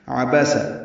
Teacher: عبس عین وسط حلق سے ادا کرنا ہے